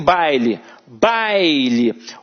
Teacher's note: em baile, baile, o A é a vogal e o I é a semivogal